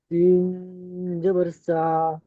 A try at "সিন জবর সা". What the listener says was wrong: সিন জাবার সা। সা টান হবে না, জাবার। টান হয় না, খেয়াল করে পড়তে হবে। সিন জাবার সা।